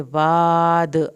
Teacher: वाद अलिफ को खींच के पढ़ना है, दाल पे कलकला होगा